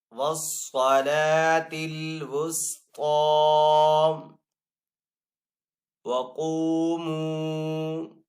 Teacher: واو مدہ ہے اور آگے یہاں پہ بھی واو مدہ ہے، تو دونوں کو یعنی کہ قاف اور میم دونوں کو ایک الف دو حرکات کے برابر کھینچ کر ادا کریں گے